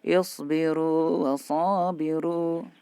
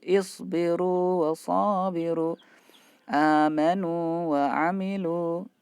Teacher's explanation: ini ada wawu sukun bertemu dengan wawu ya. Ini tidak boleh diidghamkan.